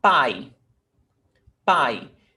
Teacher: You almost don't hear E. It's very subtle. It's very weak. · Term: semivowel